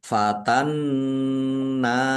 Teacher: nun tasdid dibaca gunnah atau mendengung, ditahan biar tampak mendengungnya. Nun fathah alif mat tabi'i panjang 2 harokat.